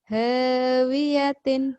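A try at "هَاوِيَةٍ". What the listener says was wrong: Hawiyatin. Ha aja. Hawiyatin gitu. Jangan huyatin. Jangan hu. Ha. Hawiyatin.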